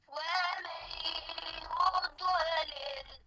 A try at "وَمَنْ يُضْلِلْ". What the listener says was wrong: कलकला अभी भी हो गया फिर पढ़े